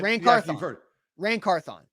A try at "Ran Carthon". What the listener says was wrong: The emphasis is on thon. You're putting them all together. Ran Carthon. Ran Carthon. 3 syllables. Ran Carthon. Not Ran Carthon.